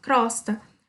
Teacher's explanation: a gente fala, né, o Ozinho aberto, tá? O som sai do O, sai aberto.